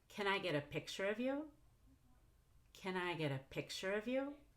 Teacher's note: go down on the primary free stress which is picture so I go down on picture so I can go up on of you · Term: primary phrase stress